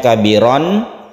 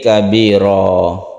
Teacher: Iwad artinya ganti, maksudnya adalah tanwin fathah ini diganti menjadi mad. Asalnya kabiron menjadi kabiro. Kabiro panjangnya satu alif. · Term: mad iwad